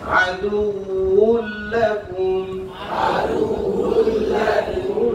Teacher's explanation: ঠোঁট গোল হইছে কিন্তু ফাঁকা আছে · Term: ওয়াও